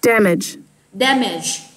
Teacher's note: nhớ là nhấn âm 1, mở khẩu hình lớn ra và bật trọng âm ra ha.